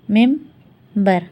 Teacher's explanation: نون کے بعد جو بے آ رہا ہے اس کو ہم بدلیں گے میم میں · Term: اقلاب